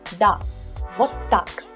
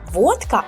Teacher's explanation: Please bear in mind that here we put emphasis on вот.